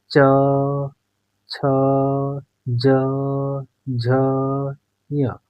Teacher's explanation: च वर्ग का उच्चारण करने पर हवा तालु से टकरा रही है। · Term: तालव्य